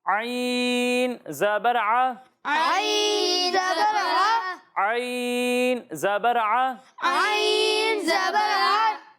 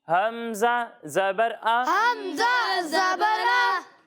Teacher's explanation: ایک حرف ہے عین اور دوسرا حرف ہے حمزہ۔ جب ہم عین کی ادائیگی کریں گے تو اسے حلق کے درمیان والے حصے سے پڑھیں گے، اور جب ہم حمزہ کی ادائیگی کریں گے تو اسے حلق کے نیچے والے حصے سے پڑھیں گے، یعنی اسے پڑھیں گے حمزہ زبر آ، حمزہ زبر آ، اور اسے پڑھیں گے عین زبر ع، عین زبر ع، عین زبر ع، عین زبر ع، آ نہیں، عین زبر ع۔